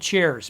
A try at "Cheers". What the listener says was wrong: Cheers. You said chairs.